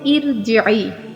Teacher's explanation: را سے پہلے زیر آ گئی تو را باریک ہوگا